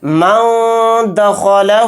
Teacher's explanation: دخلہ نہیں بولیں گے، یعنی نون کو ظاہر نہیں کرنا ہے، ناک میں چھپا کر پڑھنا ہے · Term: اخفا